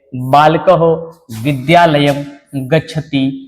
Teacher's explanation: अनुस्वार जिसका उच्चारण जो स्थान है वो नासिका है। यह नाक से निकलने वाले वर्ण है और इसका जो प्रयोग है वो बिंदी के रूप में होता है तो कहीं म के रूप में होता है।